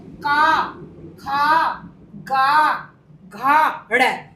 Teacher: देखिए जैसे का अब कंठ से आवाज निकल रही है हमारे गले से।